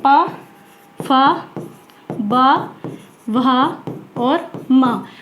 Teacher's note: जो पा वर्ग हमारा पूरा होता है वो आता है ओष्ठ के अंतर्गत, क्योंकि इसका उच्चारण स्थान ओठों से ही किया जाता है।